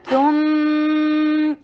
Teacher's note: میم کے پر اکمل غنہ کیجیے اور فتحہ کو شارٹ رکھیے